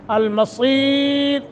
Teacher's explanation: المصیر صاد موٹا، را باریک